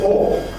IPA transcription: ɔː